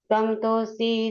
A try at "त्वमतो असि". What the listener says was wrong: एक मिनट तम तो नहीं, त्वमतो असि, एक मिनट त्वमतो असि जगत बंधुस, त्वमतो असि जगद भिषक, त्वमतो असि जगद्धाता, त्वमतो असि जगद्हिता